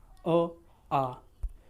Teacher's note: जो अ और आ है इनका उच्चारण स्थान कंठ से होता है